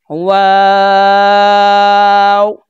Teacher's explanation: دونوں ہونٹوں کی گولائی سے اس کو ادا کرتے ہیں۔ اوپر والا اور نیچے والا ہونٹ آپس میں ملتے نہیں ہیں، ان کو گول کر کے پڑھتے ہیں۔ تو یہ والا جو حرف ہے واو، دونوں ہونٹوں کی گولائی سے ادا ہوتا ہے۔